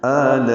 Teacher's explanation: میں آ میں مد بدل ہے، یہ 2 حرکات لمبا ہے، لا میں الف مدہ کے بعد حمزہ آنے کی وجہ سے مد متصل ہے، ہم اس کو 4 حرکات سے زیادہ لمبا کرتے ہیں۔